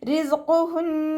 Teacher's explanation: റിസ്ഖുഹുൻ ഉച്ചരിക്കുമ്പോൾ അസ് എന്നുള്ള സൗണ്ട് കൊടുക്കാനായിട്ട് ശ്രദ്ധിക്കുക കേട്ടോ. ഖാഫ് ഇസ്തിഅലായുടെ ലെറ്ററാണല്ലോ, അപ്പം നാവിൻ്റെ ബാക്ക് മുകളിലേക്ക് പൊക്കി കൊടുത്തിട്ട് തഫീം ചെയ്യുക. നൂനിന് ശബ്ദ വന്നു, അഖ്മൽ ഉന്നനാണ്, നന്നായിട്ട് മണിച്ചു കൊടുക്കുക.